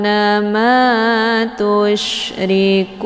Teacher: ada nun sukun ketemu huruf Sya ini dinamakan dengan Ikhfa ausat makna ausad itu pertengahan antara makharijul huruf nun dengan Sya